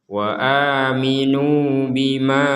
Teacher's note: di sini ada harokat bendera yang kita memanjangkannya 5 sampai 6 harokat. Jadi kita membacanya wa aminu bima, jadi lebih panjang daripada yang nu di sini.